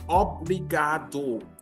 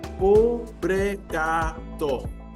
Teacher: In European Portuguese, we say obrigado, with the crisp ending. But in Brazil, it's a softer ending